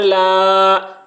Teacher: لام کے اوپر کھڑا زبر ہے، کھڑا زبر برابر ہوتا ہے الف مدہ کے، اس لیے کھڑا زبر کو ایک الف کے برابر کھینچ کر پڑھیں گے